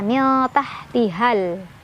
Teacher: ada alif lam qamariyah karena ada alif lam ketemu huruf qamariyah yaitu hamzah. Cara bacanya alif lamnya dibaca jelas. · Cuman karena di depannya ketemu sama hamzah wasol dan setelah hamzah wasolnya ada sukun, maka mad tabi'inya nggak dibaca lagi panjang ya. Jadi bukan mad tabi'i lagi, dibacanya pendek aja. Miltahtihal, langsung ke lam.